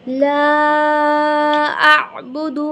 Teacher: لام الف مدہ، اسے ہم 5 الف کے برابر کھینچیں گے